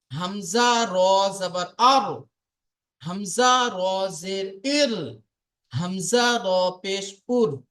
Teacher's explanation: র উচ্চারিত হয় জিহবার উল্টা পিঠ এবং তার বরাবর উপরের তালুর সাথে লাগিয়ে উচ্চারিত হয় র এটা হলো জিহবা এই জিহবার উল্টা পিঠ মানে আগার উল্টা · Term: র এর মাখরাজ